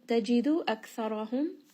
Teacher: Tajidu aktharahum Kaf here is going to have hams, so just give it a little bit of air. Ra here is going to be heavy because it has a fatha